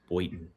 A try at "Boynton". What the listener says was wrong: Boyn. No, Boynton. There's a secret N in there.